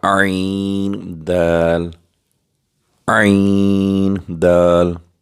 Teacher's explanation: عین وسط حلق سے ادا ہوگا، یہ حروف حلقی میں سے ہے